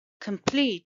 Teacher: is a two syllable word and stresses on the second syllable